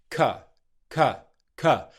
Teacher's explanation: you're making the K consonant sound, followed simply by a schwa sound. Or if you want to think of a schwa sound more easily, you're basically making noise. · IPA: /kə/